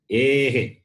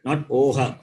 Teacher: this anuswara and visarga comes along with the vowel and take the sound of the vowel